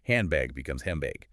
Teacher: Because the N before the B becomes an M, it's easier to say handbag becomes hembag. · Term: assimilation